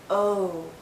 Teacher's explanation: our lips are very rounded but it's more open oh think of the letter o o o but as we